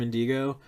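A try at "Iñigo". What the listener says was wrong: Inigo. No D. I feel like even if you know it and you feel like you're saying it right, it's probably still hard to say just because like indigo is a word.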